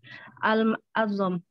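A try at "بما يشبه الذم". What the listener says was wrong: Azam pakai zal, Mbak. Bima yushbihud dzam pakai zal.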